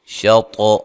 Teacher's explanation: طا کو موٹا ادا کرنا ہے، قلقلہ کرنا ہے